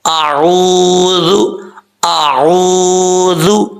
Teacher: ذال کو سیٹی کے ساتھ نہیں پڑھنا